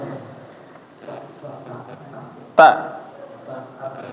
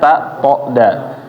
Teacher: Huruf tak di nempel di gigi depan. Ujung lidah nempel di gigi, pangkal gigi seri atas.